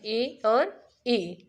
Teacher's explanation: दूसरा है तालव्य, और जो दूसरे स्वर हैं ई और ई, वे तालु से बोले जाते हैं